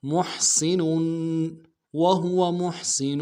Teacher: کے ساتھ ملانا ہے، ہا کو گھرائی سے ادا کریں گے، سین کی سیٹی باریک ہوگی ، نون کے اوپر تنوین ہے غنہ کریں گے، محسن وهو